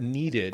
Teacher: So you have that extra syllable, that id sound.